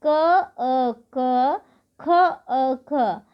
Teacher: क, ख सब में जो है अ ध्वनि हमें अंत में सुनाई देगी, अर्थात क, अ, क, ख, अ, ख, अर्थात सभी व्यंजन वर्णों में अ वर्ण पहले से ही छुपा हुआ है और ये अ वर्ण की सहायता से ही इनका उच्चारण पूरा हो रहा है, तो इसलिए ये स्वतंत्र नहीं है।